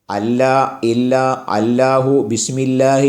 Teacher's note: സ്പർശിക്കേണ്ടതും അല്ലാ ഇല്ല അല്ലാഹു ബിസ്മില്ലാഹി എന്നൊക്കെ പറയുമ്പോൾ നമ്മുടെ നാവ് പല്ലിൽ സ്പർശിക്കാറില്ലല്ലോ പല്ലിന്റെ മുൻപല്ലിന് തൊട്ടുമുകളിലുള്ള ഊനിലാണ് നമ്മുടെ നാവ് സ്പർശിക്കുന്നത്